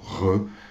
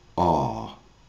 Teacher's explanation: en français, on vibre le fond du palais pour le re, ça donne un son re. Or qu'en anglais, le son est complètement clair, il n'y a aucune vibration, c'est R. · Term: le son de la lettre R